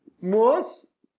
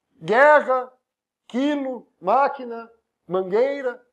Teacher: Não tem o som do U, então não é ditongo.